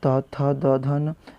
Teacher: त थ द ध न, इनका कैसे होता है? दंत से।